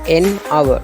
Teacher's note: இந்த அவர் என்ற சொல் எழுத்தில் மெய்யெழுத்தை கொண்டு ஆரம்பிச்சிருக்கு எச். ஆனால் உச்சரிப்பில் ஓலேருந்து தொடங்குது. ஏனென்றால் எச்சுக்கு இங்கே சவுண்ட் இல்லை.